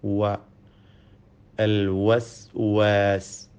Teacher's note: വാവിൻ്റെ മഖ്റജ്, ഉത്ഭവസ്ഥാനം 2 ചുണ്ടുകളാണ്. വാവ് ഉച്ചരിക്കുമ്പോൾ ചുണ്ടുകൾ വൃത്താകൃതിയിലാവുന്നു എന്നത് ശ്രദ്ധേയമാണ്. വ, അൽ വസ്വാസ്. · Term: വാവിൻ്റെ ഉച്ചാരണം